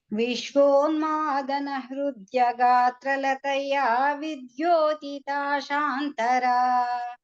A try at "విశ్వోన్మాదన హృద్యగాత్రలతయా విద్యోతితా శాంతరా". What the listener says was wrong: ఇప్పుడు బాగా వచ్చింది, ఇందాక ఏదో దోషం వచ్చింది అనుకున్నాను.